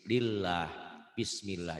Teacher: Tapi sebelum lafaz Allah baris di bawah, dibacanya tipis.